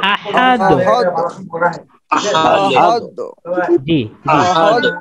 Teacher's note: এখানে একটু শেষের দালটাকে আমরা আরেকটু ধাক্কা দিব এটা একটু ধাক্কার মত হবে